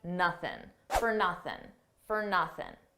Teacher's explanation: For nothing, we already talked about for, an unstressed fur. And notice how I dropped that G sound at the end of nothing, and I said nothing, for nothing, for nothing.